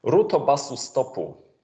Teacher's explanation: taking the closed syllables and adding a vowel after them to turn them into open syllables, as is the phonotactics of Japanese. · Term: insertion of a mini vowel